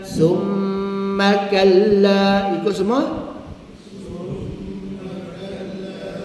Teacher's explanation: Mim sabdu nun sabdu. Imam-imam riwayat membaca dua hingga empat harakat. Maknanya tak boleh kurang daripada dua.